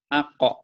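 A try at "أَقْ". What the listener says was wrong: Jangan ako. Kalau ako ada barisnya. Jangan ako. Kalau ako berarti ada barisnya. Ada baris di sini. Ako, ini ako nih. Kalau ako, ini ada patahnya.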